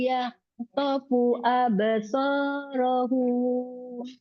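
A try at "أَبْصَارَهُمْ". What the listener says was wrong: Nah, tapi humnya absorohum, gitu aja. Absorohum. Panjang.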